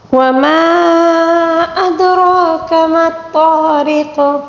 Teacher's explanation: مد منفصل ہے، اس کو 3 الف کے برابر کھینچ کر پڑھنا ہوگا